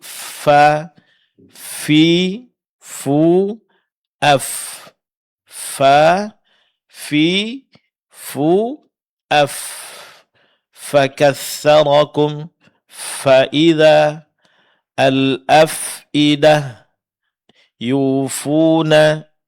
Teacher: huruf fa keluar dari disentukannya ujung gigi seri atas dengan bibir bawah bagian dalam